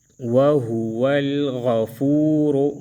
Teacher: را کو موٹا پڑھیں گے